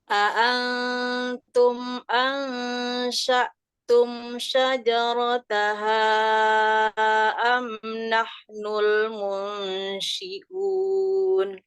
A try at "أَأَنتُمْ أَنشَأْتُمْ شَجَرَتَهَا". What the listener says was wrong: Ini kayaknya baca nun ketemu ta, nun ketemu shin sama semua cara bacanya. Kalau baca atum, coba ini tanya bertasdid. Gimana lidahnya? Atum, coba. Atum. Nah, lidahnya kayak gitu pas baca nun. Aantum. Itu lidahnya kayak gitu. Pas bacaan ketemu sya ini, kita baca kayak seolah-olah shinnya mau tasdid. Jadi, asya. Nah, jadi mulutnya asya. Ya, lidahnya seperti mau ketemu shin tasdid.